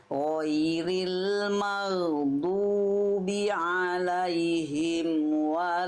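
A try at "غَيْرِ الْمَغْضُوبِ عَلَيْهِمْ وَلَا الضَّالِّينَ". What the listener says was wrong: Tapi ayat terakhirnya udah bagus, tinggal ini aja, tinggal huruf shad dan ro aja. Huruf shad dan ro dilatih ya.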